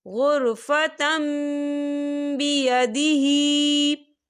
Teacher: ہم تا کو جو ہے میم کے ساتھ ملا کر پڑھیں گے اور یہاں پر غنہ بھی ہوگا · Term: اقلاب